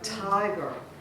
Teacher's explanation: A trochee is the opposite of an iamb. It's one stressed syllable followed by one unstressed syllable, like tiger.